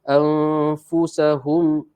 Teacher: Maka dengung 2 harakat dengan percampuran bunyi fa dalam dengung nun. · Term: ikhfa hakiki